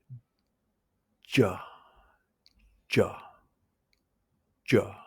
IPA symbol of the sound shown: ʤ